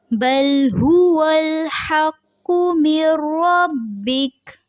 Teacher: جو قاف ہے اس کو پر رکھیں گے